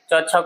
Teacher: च छ का उच्चारण तालु से।